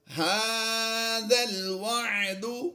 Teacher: یہ ذال کی زبر کو ہم نے لام سے ملانا ہے۔ یہ درمیان میں آپ جو دو الف خالی دیکھ رہے ہیں ان کو ہم سائلنٹ رکھیں گے، ذال لام زبر ذل کی آواز دیں گے۔